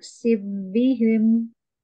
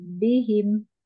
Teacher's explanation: Ya, ini fa-nya langsung ke ba, jadi fa-nya hilang ya